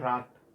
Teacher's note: जब आपने रात बोला तो ता के साथ स्वर का उच्चारण नहीं हो रहा, अर्थात इस ता को हमने लिख जरूर स्वर के साथ रखा है लेकिन इसका उच्चारण स्वर सहित नहीं है। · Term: बदाक्षर